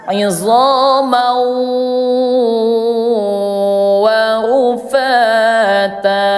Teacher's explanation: Yang dimasukkan suara tanwin ini ke huruf wau. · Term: idgham bigunah